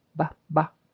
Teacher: And the B is voiced. You can feel a tickle.